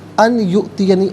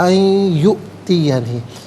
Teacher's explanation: ان میں نون ساکن ہے، اس سے یؤتیہ کی یا کے ساتھ ملائیں گے۔ یا کی آواز کو ناظرین جو ہے وہ غنّے کے ساتھ ادا کیا جائے گا۔ یہاں پر یرملون کا قاعدہ اپلائی ہوگا۔